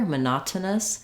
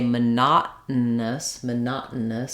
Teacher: I'm stopping the air for the T but I'm not letting it out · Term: unreleased